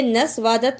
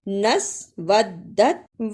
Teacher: نسودت، اسے نسوادت نہیں پڑھنا، واو کو دال سے ملانا ہے، دال پر شد ہے